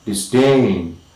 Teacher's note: the primary stress is falling on the second syllable